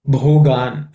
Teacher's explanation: Bho has to be aspirated.